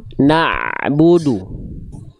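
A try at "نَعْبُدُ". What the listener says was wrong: tapi nnya jangan dipanjang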